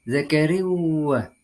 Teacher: dengan meleburkan Bunyi atau suara dua baris ke dalam huruf wau yang disertai dengan dengung selama dua ketukan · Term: Idgham Bighunnah